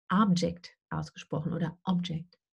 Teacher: Okay, also wenn wir das Wort sehen, dieses hier, dann können wir gar nicht wissen, wie es ausgesprochen wird, weil wir ohne Kontext nicht wissen, ob es ein Nomen ist, ein Noun, oder ein Verb, ein Verb. Wenn es ein Nomen ist, wird es auf der ersten Silbe betont und Object ausgesprochen oder Object.